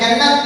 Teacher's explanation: مثال کے طور پہ جیم، نون، نون تے، اس طرح کیوں پڑھے؟ نون کے اوپر تشدید آنے کی وجہ سے اس کو ڈبل پڑھا، 2 حرف پڑھے جاتے ہیں۔ جیسے مثال کے طور پہ جنت ہے، جیم، نون، نون تے، اس طرح جنت پڑھیں گے۔ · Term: مشدد